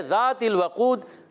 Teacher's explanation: ذال کا مخرج بھی ہے، زبان کا سرا اوپر کے دانتوں کے اندرونی کنارے سے